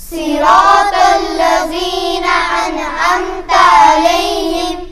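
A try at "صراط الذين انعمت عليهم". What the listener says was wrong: صراط الذین ذال ہے، ذال اور زا میں فرق ہے. ذال کو آہستہ سے ادا کریں گے. صراط الذین، ٹھیک ہے. زبان کا جو نوک ہے وہ اوپر کے دانتوں کے کنارے پر لگے گا، تو پھر را صراط الذین، پھر ذال ادا ہوگا.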